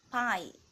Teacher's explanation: The lips are brought together to obstruct oral cavity. P consonant is a voiceless consonant